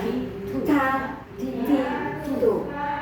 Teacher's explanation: Kalau ta itu ada desahnya, ada hamzanya tu, ta, ti, tu, namanya hamz.